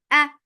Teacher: Hamza is very sharp. There is no flow of sound here.